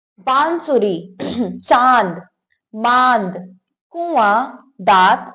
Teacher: जिन वर्णों का उच्चारण करने में हवा नाक और मुख दोनों से निकलती है, उसे अनुनासिक कहते हैं।